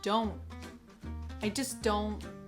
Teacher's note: at the end of don't, we have this held T